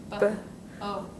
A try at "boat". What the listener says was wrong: It sounds like oat. That's the second sound in the word. We gotta put the buh sound on the beginning.